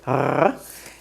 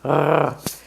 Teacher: the sound resh in Hebrew is made in the back of your throat. It's a rolling R, like in Spanish, r, but you bring the roll to the back of your throat, r, or like a dog growling, r.